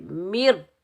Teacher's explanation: रा भी हरूफ़ मुस्तअला में से है तो रा को भी हम पूर पढ़ेंगे, मोटा पढ़ेंगे